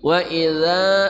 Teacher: Wa idza, panjang ya, matabi'i. Wa idza, zal dari ujung lidah bersama ujung gigi seri atas